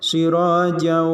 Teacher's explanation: Ada tasdid di situ. Sirajau, idgham bi guna ditahan bacaannya.